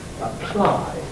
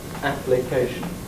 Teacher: Apply, voiceless L, application, voiced L.